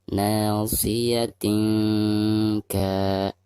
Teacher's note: Nasiyatin Perhatikan di bawah ta marbutoh ada tanwin kasrotain, lalu berhadapan dengan salah satu huruf ikhfa, di sini huruf kaf ya. Maka cara membaca tanwinnya itu harus disamarkan disertai dengan dengung.